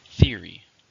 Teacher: How many syllables are in theory? 2. Stress on the first.